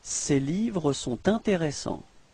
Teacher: you can hear this small link between sont and intéressant.